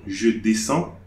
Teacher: I'm not pronouncing D, neither the S also